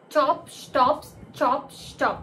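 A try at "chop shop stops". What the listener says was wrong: This is not స్టాప్, shops.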